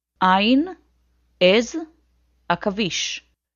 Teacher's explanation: Ain sounds like the letter Aleph but comes from even deeper in the throat. It's the sound that the doctor wants you to make when she examines your throat with a tongue depressor.